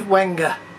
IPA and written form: ˈwɛŋɡeɪ (Wenge)